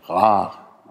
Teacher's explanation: Und das normale R im Französischen ist halt hier auch eigentlich Frikativ. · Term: Frikativer uvular